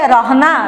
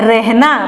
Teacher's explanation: ह के पहले आने वाला अ को हम लोग क्या करते हैं, ए की तरह उच्चारण करते हैं।